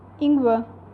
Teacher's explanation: If R is at the end of the German word, then it will not be fully pronounced like Ingwer.